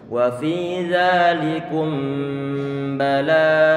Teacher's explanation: Jadi bacaan ikhfa syafawi ini pun ada suara dengungan. Kemudian kata bala, ini kata bala ba-nya difathahkan.